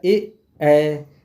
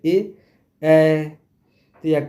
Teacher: ए ऐ कंठ तालु से बोला जाता है।